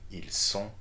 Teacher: please note that we are not pronouncing the T here